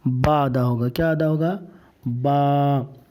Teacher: تو با کا مخرج ہے دونوں ہونٹوں کی تری۔ تو جب دونوں ہونٹ کی تری کو اوپر اور نیچے کی تری کو حصہ ملائیں گے دونوں کو، تو یہ کیا ادا ہوگا؟